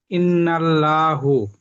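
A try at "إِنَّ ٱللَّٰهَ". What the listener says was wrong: ইন্নাল্লাহ পড়লেন কেন? কেন ল পড়ছেন কেন? ল কেন পড়ছেন এখানে, ইন্নাল ল কেন পড়ছেন বলেন, আমাকে বলে বোঝান।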